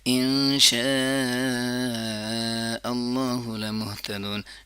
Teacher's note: شاہ کو ضرور اسٹریچ کریں گے، مد متصل ہے اور مد متصل کو لمبا کرنا بہت ضروری ہوتا ہے